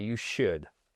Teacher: on prononce pas le L ici